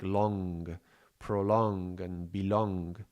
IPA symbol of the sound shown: ŋ